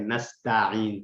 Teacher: نستعین میں تھوڑا سا تا جو ہے نا آپ اس کو باریک رکھ کے اور عین کو پھر ساتھ میں کلیئر رکھیں